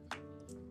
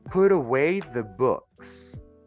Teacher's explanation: we have to pronounce the T between two vowels like an R.